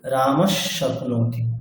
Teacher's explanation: বিসর্গের পরে যদি তিনটি সকারের কোনো একটি সকার থাকে, তাহলে আমরা বিসর্গের জায়গাতে সেই পরবর্তী সকারটাই বিসর্গের জায়গাতে বসিয়ে উচ্চারণ করি। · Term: বিসর্গের সন্ধি